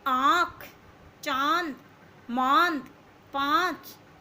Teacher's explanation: इसके उच्चारण में मुंह और नाक दोनों का प्रयोग होता है। इसके जब हम इसको बोलते हैं तो हमारा, जैसे हम बोलते हैं ना चांद, तो नाक और मुंह दोनों का प्रयोग होता है। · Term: अनुनासिक